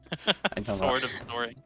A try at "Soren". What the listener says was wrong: Well, it's Soren, not soaring. Soren. It's like saying soaring, but it's the lazy way, so it's just Soren.